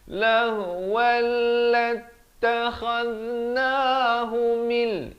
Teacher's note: أَن نَتَّخِذَ, di hujung lidah, نَتَّخِذَ لَهْوَلْ, idgham bila gunnah. Asalnya lahwan, datang lam jadi lahwal, terus masuk.